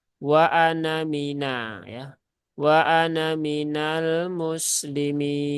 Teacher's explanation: Sehingga nunnya terbaca pendek cukup satu harokat.